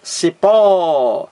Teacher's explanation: Aqui a palavra cipó, duas sílabas. A sílaba mais forte é a última, cipó. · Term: palavra oxítona